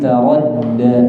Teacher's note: da bukan yang d, tapi taradda. Di antara d sama dh.